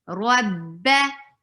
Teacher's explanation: Ra is heavy. Whenever ra has fatha or dhamma, it's always heavy. Rabba. Ba will be short.